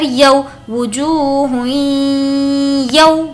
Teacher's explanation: یو میں یہاں پر واو لین ہوگا اس لیے نہیں کھینچیں گے. وجوہ ہوئی یو.